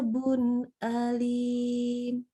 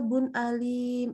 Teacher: kita baca jelas nggak boleh ditahan nggak boleh didengungkan didengungkan dengan berlebihan karena huruf nun sendiri huruf dengung ya huruf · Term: izhar halqi